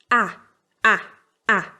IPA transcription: æ